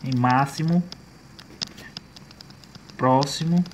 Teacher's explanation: o X ele vai ter o som de SS e não de KS